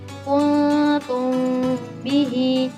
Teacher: bentuk bibir saat mengucapkan ifa syafawi yakni dua bibir ee yang dipertemukan tanpa kerenggangan dan tanpa tekanan